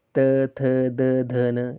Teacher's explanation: जैसे तो ट जो है, जब हम ट का उच्चारण कर रहे हैं तो हमारे तालु के मूर्धा भाग से जो है वो उच्चारण हो रहा है इसका, जैसे ट, ठ, ड, ढ, न, आप बोल सकते हो। उसी तरह दंत्य व्यंजन यानी कि दांतों से जिनका उच्चारण होता है, तो जैसे त, थ, द, ध, न, इसमें जो उच्चारण है वे दंत से हो रहा है।